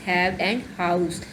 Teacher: This sound is usually described as a voiceless glottal.